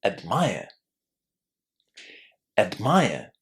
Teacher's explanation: Now, in case you were wondering about why I wasn't pronouncing the letter R at the end of admire, my accent is British, so in situations like these, British speakers don't pronounce the letter R.